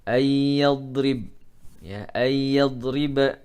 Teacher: dad bukan qalqalah maka jangan sampai terpantul